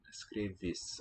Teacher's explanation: the vowels that come after the tonic syllable, the main accented syllable of the word, tend to get raised. They'll sound a little different Escreves.